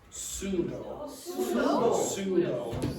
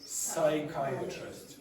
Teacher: Do not pronounce the P when you have words that begin with PS.